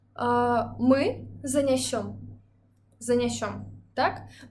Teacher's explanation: Мы бачым націск на канчатку. Значыць, калі мы будзем будаваць другую асобу, у нас таксама націск павінен быць на канчатку.